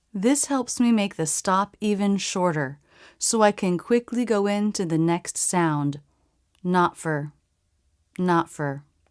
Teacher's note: I stop the air, not, and then without releasing go into the F sound.